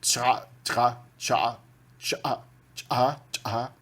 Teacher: Tem muitos sons ejetivos, né, que colocam uma explosão glotal depois da consoante